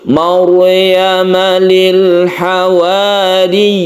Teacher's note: Maryam ada sukun ra, yang sebelumnya ada fathah, maka ra-nya ini dibaca tebal atau tafkhim. Agak mencucu.